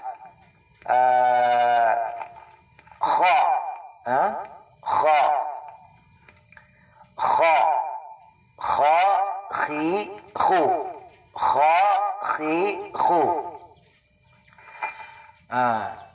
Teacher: Ang kha, ang kapariho niya ay harf o litra na gha, ghain, harf ghain, at saka itong harf kha ay magkapareho sila ng makhraj o lugar kung saan maglabas. Dito po sa adna, al-halq, sa may bandang dulo ng ating lalamunan sa bandang may itaas.